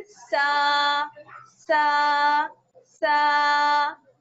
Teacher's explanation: जा और सीन, इन दोनों को पढ़ते वक्त सीटी की सी आवाज निकलती है